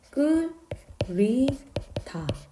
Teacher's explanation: 그러면 역시 자음군에서는 뒤에 모음이 오면 앞에 하나가 남고 뒤에 거는 연음이 돼서 끌, 히, 다 라고 발음이 돼야 되는데 이렇게 되지 않고 히읗이 탈락해서 끌, 리, 다 이렇게 된다는 거죠. 그래서 이게 히읗 탈락 현상입니다.